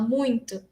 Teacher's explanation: A gente tem essa consoante nasal, que é o M, e porque ela é nasal, a vogal seguinte a ela também vai ser nasal. Então, o U é muito nasalizado